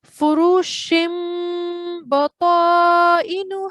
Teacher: the sound of nun is changed into mim with a prolonged light nasal sound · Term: iqlab